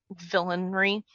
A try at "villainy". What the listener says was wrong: Villainy. No, there's no R.